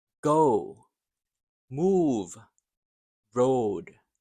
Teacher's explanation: The long O. This is the gliding O. It starts in the middle and moves forward.